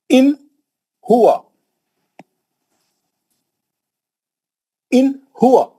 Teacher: पढ़ेंगे इजहार कैसा करना इजहार किसको बोलते हैं इजहार बोलते हैं नून को जल्दी पढ़ना नून को खींचना नहीं नून का गुना नहीं करना · اظہار بولتے ہیں نون کو جلدی پڑھنا، نون کو کھینچنا نہیں، نون کا غنہ نہیں کرنا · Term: نون کا اظہار